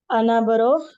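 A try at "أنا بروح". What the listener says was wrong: अना बरूह, तो आपका मेन वर्ड था रूह, आपने बा लगा दिया, बरूह, तो विल गो।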